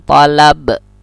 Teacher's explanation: Qalqalah itu mentul kalau kita matikan tolab.